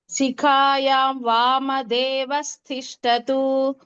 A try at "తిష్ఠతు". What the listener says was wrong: తిష్ఠతు అది టా మహాప్రాణం.